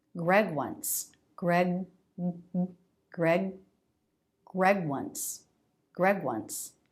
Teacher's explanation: there's just a little bit of sound in the vocal cords which does distinguish the sounds even though they're not released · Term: voiced stop consonants